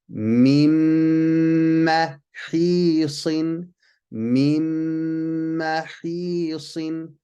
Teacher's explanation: Again, we skipped the nun sound, put a shadda on the next letter, and we did a ghunna. We held it for 2 counts